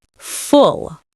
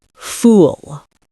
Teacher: Full is short, fool is longer.